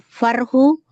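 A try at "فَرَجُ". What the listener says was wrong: Faroju. Bukan farhu, ada cimnya. Faroju.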